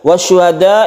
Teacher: ini adalah mad wajib muttasil kita panjangkan dua setengah Alif